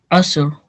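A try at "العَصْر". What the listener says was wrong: Okay, and make sure you to sound out the ra at the end. Okay, asr.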